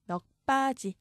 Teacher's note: 여기서 기역 뒤에 비읍, 된소리로 바뀌어야 합니다